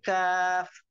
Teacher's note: জিহ্বার গোড়া থেকে একটু আগে বাড়াইয়া তার বরাবর উপরে তালুর সঙ্গে লাগাইয়া